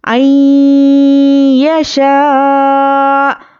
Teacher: یہ مد متصل کا قاعدہ ہے، یہاں پر 5 الف کے برابر ہمیں کھینچ کر پڑھیں گے